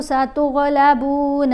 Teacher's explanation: कौफ़ को हमने मोटा पढ़ना है, रा को मोटा पढ़ना है, गईन को मोटा पढ़ना है, पुर पढ़ना है इनको, क्योंकि ये वो वाले हरूफ हैं जिनकी आवाज़ें भारी आवाज़ें हैं।